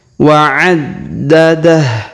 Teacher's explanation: huruf ha atau hu di ujung kita sukunkan ya